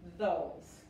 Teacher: la S se pronuncia como una Z y la E al final es muda